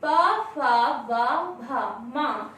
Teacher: ओष्ठ से, क्योंकि जब हम प, फ, ब, भ, म शब्द का उच्चारण करते हैं तो हमारे ओठ आपस में मिलते हैं, तो इनका उच्चारण स्थान क्या हुआ? ओष्ठ।